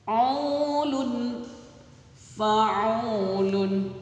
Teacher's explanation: au-nya dibaca panjang karena harkat dhammah bertemu dengan waw sukun